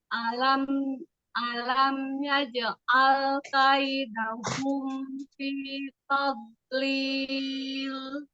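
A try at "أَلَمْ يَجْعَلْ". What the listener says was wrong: Alam yaj'al. Nah, di situ karena jimnya itu ukti kasih kolkolahnya itu diakhiri dengan hamzah, jadi dia makin sulit. Bukan alam yang seharusnya bukan alam yaj'al, tapi alam yaj'al. Alam yaj'al.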